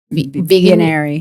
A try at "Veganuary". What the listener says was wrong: Veganuary. It's not vagina-ary. It's Veganuary. People screw that up all the time. Like January, but Veganuary.